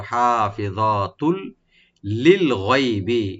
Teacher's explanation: এখানে তানবিনের পরে লাম আসছে, এখানে এদগাম হবে কিন্তু উইদাউট গুন্না, গুন্না ছাড়া এদগাম করবে